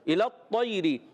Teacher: لام کو تو سے ملانا ہے، تو کو موٹا رکھنا ہے